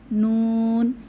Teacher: নুনের মাখরাজ জিহবার রাগা তার বরাবর উপরের তালুর সঙ্গে লাগিয়ে নুন উচ্চারিত হয়